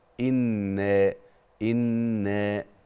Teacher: مد طبيعي حركتين فقط لا اقل ولا اكثر